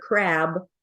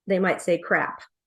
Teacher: D voicing of the final consonants so for instance they would for a b sound here they would substitute a p